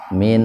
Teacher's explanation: Nun mati ketemu dengan nun, jadi nun yang pertama dimasukkan ke nun yang kedua. Idgham itu kan memasukkan dengan mendengung. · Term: idgham biguna